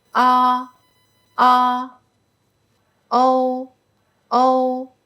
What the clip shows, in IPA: ɔ ɔ o o